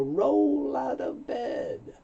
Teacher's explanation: The L moves over to the O, so you don't hear roll out. You hear roll out, and the T moves over.